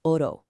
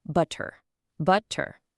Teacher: It's a single, gentle tap of your tongue right behind your teeth, like in oro. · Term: soft R